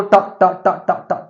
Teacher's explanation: टा कहां से बोलता है, मूर्धा से, टच होता है।